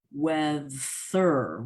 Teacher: you can pass over uh words like weather and you don't get the th in the middle